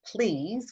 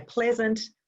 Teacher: when we say Please, we hear an e sound, so when we say pleasant, we then articulate eh sound